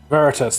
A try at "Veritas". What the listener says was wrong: Well, I think you put more emphasis on the A, Veritas, but yeah, whatever.